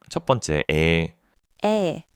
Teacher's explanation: So, A is a plus E. You start with a then you just let your mouth stretch sideways towards e.